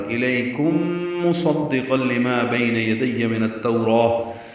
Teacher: اور پچھلی آیت میں انی رسول اللہ الیکم تھا، اس میں انی رسول اللہ الیکم ہے، لئی یا لین ہے، کم میں میم ساکن کے بعد میم آنے کی وجہ سے اس آیت میں ادغام ہو رہا ہے غنہ کے ساتھ